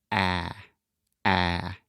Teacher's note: start with the first sound this is the a sound and it is a very open sound which means our tongue position is low and our mouth is very open so imagine opening your mouth as much as possible and then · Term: ah sound